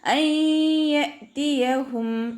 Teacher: അൻ യഅതിയഹും നൂൻ സാക്കിനയ്ക്ക് ശേഷം ഇദാം ബിഉന്നയുടെ അക്ഷരമായിട്ടുള്ള യാ വന്നിട്ടുണ്ട്. നൂൻ സാക്കിനയെ യായിലേക്ക് ലയിപ്പിച്ച് ഉന്നയോടുകൂടി ഓതാൻ ശ്രദ്ധിക്കുക